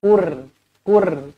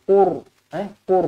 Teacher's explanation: Mulut kita kena munculkan sebab kita nak tebalkan huruf ra ni.